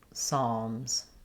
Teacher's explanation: The P is also silent, so we just start on the S sound.